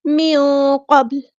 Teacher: نون کی آواز کو ہم چھپا دیں گے، اخفا ہوگا ، اور قاف ہمارا ہیوی لیٹر پورا ادا کریں گے، با